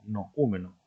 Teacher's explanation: hay una vocal fuerte átona y una vocal débil tónica entre la O y la U, noúmeno, forman hiato.